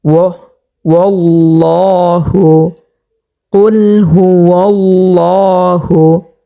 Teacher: সেই কারণে আমরা এখানে আল্লাহ শব্দ তাসদীদকে মোটা করিয়া পুর করিয়া পড়ব